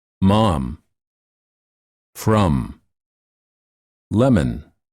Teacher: For this sound, the lips are together and the air flows out of the nose.